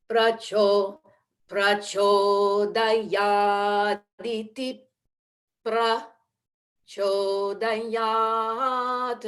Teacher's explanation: we close the lips immediately after aditip